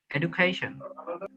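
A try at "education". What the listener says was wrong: এডুকেশন, not এডুকেশন, এডুকেশন জ উচ্চারণ হবে।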